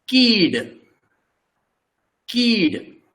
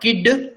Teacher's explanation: When there is only one vowel, in Konkani, the pronunciation is rather long. It is not kid, it is keed.